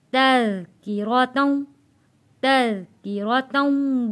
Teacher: काफ के नीचे ज़ेर है, ये काश वाली काफ पतली पढ़ेंगे। रॉ के ऊपर ज़बर है तो रॉ को मोटा पढ़ेंगे।